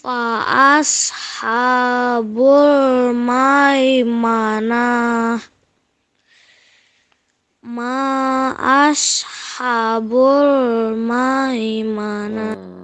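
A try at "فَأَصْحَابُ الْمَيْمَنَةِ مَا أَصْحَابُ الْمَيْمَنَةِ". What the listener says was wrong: Harusnya panjang 2 harokat. Ma'ashab. Haknya panjang. Habul.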